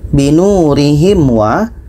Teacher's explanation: Waw tidak termasuk huruf yang ini, bermakna binurihim wa, mim mati bertemu wa, tidak dengung